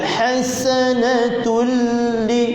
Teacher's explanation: ha pertengahan kerongkong, sin nipiskan,